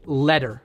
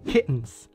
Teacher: usually in an American accent, you'll pronounce double T as D, like letter.